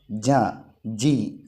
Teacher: അപ്പോൾ നാവിൻ്റെ മധ്യഭാഗം മുകളിലേക്ക് ഉയരുക.